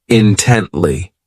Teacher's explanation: this adverb has three syllables and the stress is on that second syllable · This adverb has 3 syllables, and the stress is on that second syllable, intently. So this word means that you're just giving all of your attention to something, that you are sharply focused on this thing.